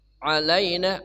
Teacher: ain ya tengah kerongkongan